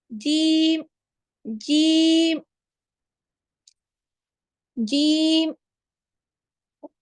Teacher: आप लोगों का जबान का बीच वाला हिस्सा ऊपर की तरफ चिपक रहा है · जीम की अदायगी में जैसे जीम पढ़ेंगे सारे वुस्ते लिसान से अदा होते हैं, लेकिन डिफरेंस क्या है? जुबान का बीच वाला हिस्सा जब ऊपर के तालु से के साथ मिल जाए या चिपक जाए तब जीम अदा होता है।